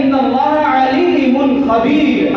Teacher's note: عین کے ساتھ عین حلق سے نکالیں گے